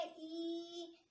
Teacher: ये दीर्घ स्वर है, यानी कि इसमें दो मात्रा का समय लग रहा है